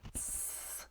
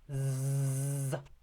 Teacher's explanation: So the difference between s and z, s, z, the S and the Z sound is one of this glottal state. The S is voiceless, there's no vibration, and the Z, is voiced.